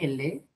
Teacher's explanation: el aire sale por ambos lados de la lengua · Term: lateral